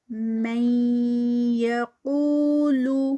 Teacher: وَمِنَ النَّاسِ مَن یقول، میں آگے یہاں پر نون ساکنہ، اور نون ساکنہ کے بعد ہمارے پاس یا آ گئی ہے، تو یہ بھی یرملون کے لیٹر میں سے ہے، تو یہاں پر بھی ادغام ہوگا ود غنہ